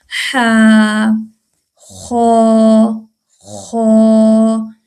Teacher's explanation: हलक के दरमियानी हिस्से से ये ह अदा होता है। · یہ حلق کے اوپر والے حصے سے ہے جو زبان کی جڑ کے ساتھ ہے · ہا حروف حلقی میں سے ہے، حلق سے ادا ہوتا ہے، حلق کے درمیانی حصے سے حلق کے سے 6 حروف ادا ہوتے ہیں اور حلق کے درمیانی حصے سے یہ ہا ادا ہوتا ہے